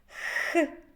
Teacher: під час вимови звук х повітря зустрічає перешкоду язик та піднебіння Тому цей звук приголосний